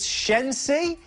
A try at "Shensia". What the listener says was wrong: Shensia, you missed the A.